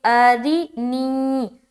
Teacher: را کے نیچے زیر آ جائے تو را کو باریک پڑھنی ہے ، تو یہاں پر باریک پڑھیں گے، ارینی،